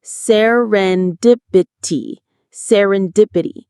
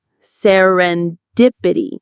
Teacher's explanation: The stress is on dip.